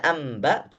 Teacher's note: tidak terdengar huruf nun sama sekali justru yang terdengar huruf mim am ba nunnya sudah tidak ada dia hanya tertulis saja ya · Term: iklab